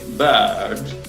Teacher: imaginen que este sonido es como una schwa, pero un poco más largo